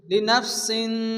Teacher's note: তানবিনের পরে হরফে ইকফা পাঁচ অক্ষরের মধ্যে সিন আসছে আগে গুণা হবে